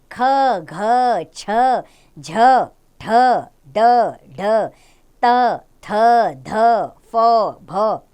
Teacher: जिन व्यंजनों का उच्चारण करते समय वायु मुख से अधिक मात्रा में निकलती है ये व्यंजन महाप्राण कहलाते हैं